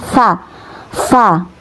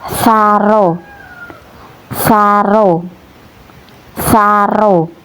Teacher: Ini tsa tsa mendesis ya di ujung lidah. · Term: huruf tsa, huruf sa